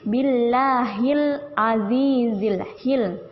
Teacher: Lam di sini tidak pantul. Jelas lam sukun tidak pantul.